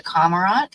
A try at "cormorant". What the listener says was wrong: we pronounce both the R's in that word.